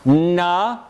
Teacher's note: there's a complete closure by bringing the tongue at the alveolar ridge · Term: minus continuant